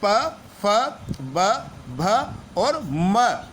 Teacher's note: दोनों होट आपस में मिलते हुए से प्रतीत होते हैं इसलिए इन्हें ओस्ट वजन कहते हैं और इनका उच्चारण स्थान ओट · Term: ओट व्यंजन